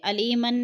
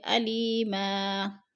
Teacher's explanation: وقف کی صورت میں ہم ایک زبر میں بدل کر پڑھیں گے، علیمن نہیں پڑھیں گے بلکہ علیما۔